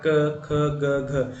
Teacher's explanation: ये पूरी लाइन जो है कंठ है, पूरी लाइन गले से बोली जाती है। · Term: कंठ्य